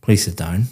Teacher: very flat intonation going down